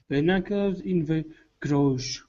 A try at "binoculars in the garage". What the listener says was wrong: Garage. Put the stress on the end. Binoculars in the garage.